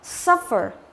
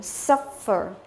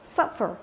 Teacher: như vậy là nhấn vào âm thứ nhất